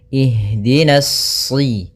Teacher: pada lafal ha, usahakan di sini mengalir nafasnya dan lembut. Ada namanya jaroyanu an-nafas.